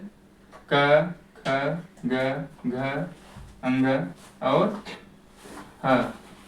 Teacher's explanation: तो कंठ उच्चारण स्थान से क, ख, ग, घ, अंग और ह, इनका उच्चारण स्थान कंठ है